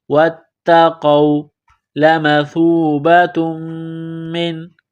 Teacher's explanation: سا کو پڑھتے وقت زبان تھوڑی سی باہر نکالیں گے